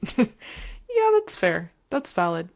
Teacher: And my voice kind of goes up because I don't feel so strongly about it. It's almost like a question voice.